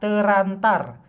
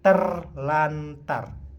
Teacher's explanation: bunyi r dan r pada kata terantar diubah menjadi l dan R sehingga menjadi terlantar